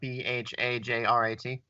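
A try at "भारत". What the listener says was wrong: There's no J. It's BHARAT.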